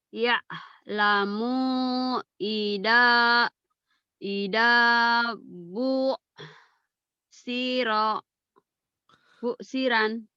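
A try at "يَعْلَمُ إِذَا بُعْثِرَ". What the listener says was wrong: Busiran mana busiran? Busira. Ya'lamu idza bu'sira. Hentikan jadi bu'sir. Bukan, neken ya. Ya'lamu idza bu'sir. Gitu aja hentikan ya. Gitu aja hentikan ya.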